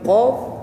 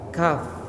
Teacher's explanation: Qaf di ujung lidah bagian dalam, qaf. Ya. Sedangkan kaf di depannya sedikit. Jadi kalau bentuk lidah tuh gini, qaf di sini, kaf di depannya.